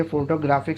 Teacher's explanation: यहाँ पे जो ग्राफिक वर्ड है उसकी स्ट्रेंथ ज़्यादा है, उसके ऊपर हमने प्रेशर थोड़ा ज़्यादा बढ़ा दिया है। तो ये फोटोग्राफिक साउंड निकलती है इससे।